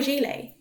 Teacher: Gilet is actually a French word so even though it is spelt ‘gilet’ the 't' is silent.